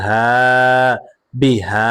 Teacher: হায়ের উপরে কারা জবর আসার কারণে এক আলিফ টান হবে মাদ্দে তবাই